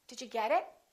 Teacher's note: in the first sentence i emphasized get but i didn't emphasize it because it is not a noun it is a pronoun